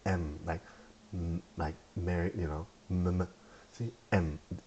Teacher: the M is just your lips being connected to each other, top to bottom.